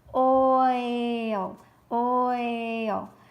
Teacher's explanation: We hear the O, I, O, O as in long O, and then the I, very light. The O is overpowering the I, so we don't hear it all. · we have two vowels that represent a glide from one sound to the other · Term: diphthong